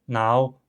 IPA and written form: naw (now)